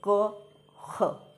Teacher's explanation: इसका उच्चारण कहां से किया जाएगा जीहा मूल से किया जाएगा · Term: जीव मूल